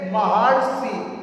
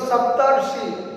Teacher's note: सप्त घन ऋषि, तो सप्तर्षि, अर निकलता है साउंड, क्योंकि शब्द ऋषि में जब ता का अंतिम वर्ण देखेंगे तो हम आ है, और ऋषि का जब हम प्रारंभिक वर्ण देखेंगे तो हमारा ये री है। आ और री मिलाकर जो हमारा साउंड बनता है वो हो जाता है अर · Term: अर साउंड